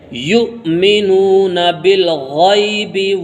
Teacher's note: یا کو واو کے ساتھ نہیں ملائیں گے، واو کے اوپر ایک حمزہ بنا ہوا ہے، اس حمزہ کے ساتھ ملا کے پڑھیں گے، اور واو یہ یہاں پر سائلنٹ ہوگا، اور حمزہ کے اندر جھٹکا لگتا ہے، یا کو حمزہ میں ملائیں گے تو جھٹکا لگا کے پڑھیں گے